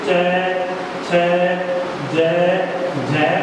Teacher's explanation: स्पर्श संघर्षी व्यंजन कौन कौन से हो गए, च छ ज झ और ये जो वर्ग है वो स्पर्श संघर्षी माना जाता है, यानी इनका उच्चारण करते समय श्वास को जीभ के साथ संघर्ष करना पड़ता है